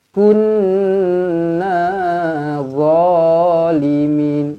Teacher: Kunna, nun sabdu wajibul gunnah. Dengungkan 2 harakat pada huruf nun ini.